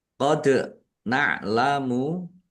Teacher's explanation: dal sukun bacaan qalqalah dibaca memantul